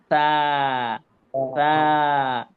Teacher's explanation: আমাদের জিহ্বার আগা দাঁতের আগার সাথে লাগবে, নরম করে আলতো করে উচ্চারণ করতে হবে